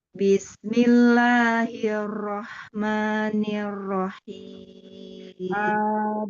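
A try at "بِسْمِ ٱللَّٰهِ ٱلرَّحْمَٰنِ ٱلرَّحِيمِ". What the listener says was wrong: B-nya tidak tampil, bis langsung, tidak bismillah, bis langsung. Ro-nya ditekan lagi karena di sini ro tasdid. Jadi ro-nya dibaca tebal, ditebalkan lagi.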